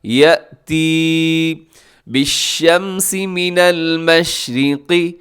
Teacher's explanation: مشرقی میں قاف موٹا را باریک